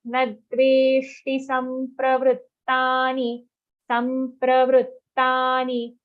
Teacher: Nadveshti, very clear aghat on na.